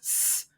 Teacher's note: absolutely think of some other sound such as an S which requires a nice very thin medial Groove down the center of the tongue that funnels the sound towards The Cutting Edge of the teeth which is what gives it that high frequency noise